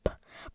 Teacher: um in the CH the one on the left is voice you don't use your vocal cords when you go P